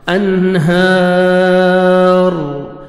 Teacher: جب سٹاپ ہوئے گا را کو تو را کو پر کریں گے کیونکہ الف مدہ کے بعد را ہے, تو آپ نے کھڑا زبر کے بعد را ہے, را کو آپ نے پر کرنا ہے.